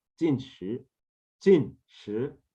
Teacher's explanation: Jin with a falling tone, Jin, and then Shi with a rising tone